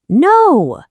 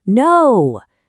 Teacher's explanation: Your voice starts high and just drops down with total finality.